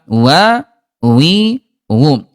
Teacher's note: huruf wau sifat hurufnya dari segi udara dia jahr tidak ada udara